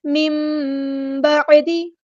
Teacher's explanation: میم بعدی، اس کو من نہیں پڑھنا، میم، ٹھیک ہے، نون کی آواز کو میم میں بدل دیں گے، اقلاب ہو رہا ہے. میم بعدی، اور ایک الف اقلاب کرتے ہوئے ایک الف کے برابر لازمی رکنا ہے.